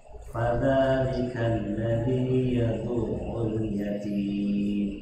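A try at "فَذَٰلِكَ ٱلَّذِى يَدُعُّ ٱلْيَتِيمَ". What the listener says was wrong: Di situ ada kata yadu. Nah, yadu'u. Itu ada ainnya bertasdid. Jadi harus dibaca lebih kuat. Yadu. Ya, yadu. Ya, jadi ada huruf yang memang harus jelas di situ. Yadu'ul. Jadi bacanya seperti itu.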